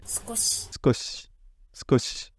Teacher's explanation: on peut entendre un petit i, mais vous voyez qu'il n'est pas voisé. Elle dit pas skoshi, elle dit skoshi. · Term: double dévoisement